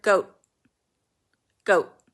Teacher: cheese goat milk but if you're speaking quickly you can apocopate you can completely drop the sound of the te at the end